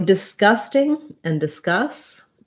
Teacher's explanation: you don't want to put in a strong k like disgusting you don't want a release of air